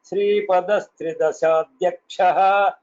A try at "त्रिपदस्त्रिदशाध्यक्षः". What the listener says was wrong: The only small input is 3. After that, I could hear a small pause. It is one single word. त्रिपदस्त्रिदशाध्यक्षः.